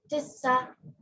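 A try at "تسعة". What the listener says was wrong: तिस्सा नहीं, देखिए तिस्सा, आप तिस्सा कह रहे हैं ना, तिस्सा ऐसे होगा, तिस्सा, तिस्सा नहीं, इसमें आइन भी है, तो तिस्आ बोलना है, ठीक है। तिस्आ आइन भी है इसमें, और आशारा, ठीक है।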